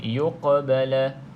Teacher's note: Qaf juga huruf qalqalah, lantunkan sedikit.